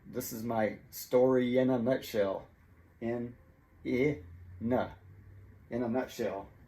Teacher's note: the n from the word in jumps over to connect to the vowel a so it sounds like a nuh this is my story in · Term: linking